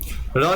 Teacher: र की आवाज आती है आपकी दंत मूल से दंत मूल यानी कि दांत और मसूड़े के बीच में जब आवाज ज टकराती है दांत और मसूड़े के बीच में